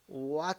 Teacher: You start in the middle of your voice and go up. It's a rising tone.